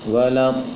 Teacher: Setelah baca do-nya baru dibaca tasydid lamnya. Panjangkan 6 harokat, panjangan lama dulu do-nya, baru baca lam tasydidnya.